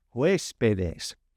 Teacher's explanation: Make sure you put that accent on that first E.